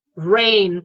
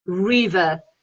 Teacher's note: la R inglesa es un fonema que viene de la U y yo subo la lengua hacia arriba, así, y ya tengo la R inglesa.